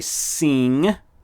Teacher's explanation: it's not seem with an m it's a ng sound